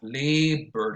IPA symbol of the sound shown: ɚ